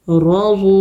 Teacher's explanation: واو ساکن سے پہلے پیش ہو تو واو مدہ ہوتا ہے، 2 حرکت کھینچ کے پڑھیں گے